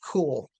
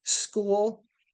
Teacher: School, that puffy of air disappears because it's one of the features in rules in English that after an S, you lose the aspiration